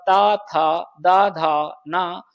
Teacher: ये सभी दंत से बोले जाते हैं